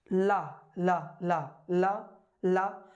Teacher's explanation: जब ला बोलते हैं तो जीभ के अगल बगल दोनों गालों के साइड से हमारा हवा निकलती है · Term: पार्श्विक व्यंजन